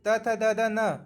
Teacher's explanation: दांत देखिए जब त थ द द न बोलेंगे तो आपका दांत का प्रयोग हो रहा है, तो यहाँ दंत उच्चरित हो जाएगा।